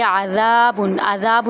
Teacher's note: عین وسط حلق سے ادا کریں گے، ذال کو ایک الف کے برابر لمبا کریں گے۔